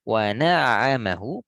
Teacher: Wa na'amahu pastikan bersambung antara ain sukun dengan ain harokat.